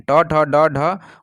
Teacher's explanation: जो है शब्द ये जो है वर्ण कौन-कौन से है तो इसका उच्चारण स्थन मुर्धा से होता है और यह ट वर्ग के जो है वर्ण आते हैं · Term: मुधन